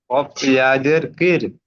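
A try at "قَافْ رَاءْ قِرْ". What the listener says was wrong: ইয়া নয়, কফ রজের কির। ইয়া নয় ভাই, র। র। ইয়া নেই এখানে, র। কফ রজের কির।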